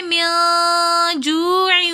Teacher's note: نون ساکن کے بعد اخفا کے 15 حروفوں میں سے جیم آ رہا ہے، تو اس لیے یہاں پر ہم دوبارہ غنہ کریں گے · واو مدہ ہونے کی وجہ سے ہم نے جو 1 الف کی مقدار کھینچ کر پڑھا